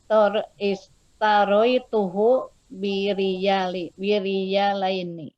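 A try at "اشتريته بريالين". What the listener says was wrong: Ahsan.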